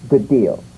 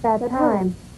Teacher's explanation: You don't need to fully pronounce the first D like good deal. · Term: prepare and link